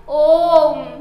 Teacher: इसमें तीन मात्रा काल का समय लगता है अर्थात ह्रस्व स्वर से तीन गुना समय लगता है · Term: प्लुत स्वर